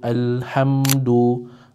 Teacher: kita kena jelaskan bunyi mim tanpa dengung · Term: izhar syafawi